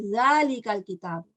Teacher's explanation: The difference is that this is pronounced very similar to tha, but there's more vibration. Za, we say zalikal kitab.